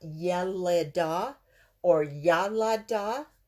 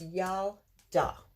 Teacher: under the lamed here, there's the shava. So it comes to kind of a stop there.